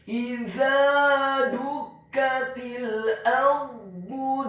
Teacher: huruf dha-nya dibaca tafkhim, tebal, dhammah 1 harokat, dengan posisi bibir bawah kita agak tertutup dan posisi lidah kita di langit-langit atas